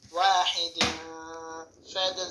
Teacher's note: এখানে তানউইনের পরে ফা আসছে, ইখফা গুণনা।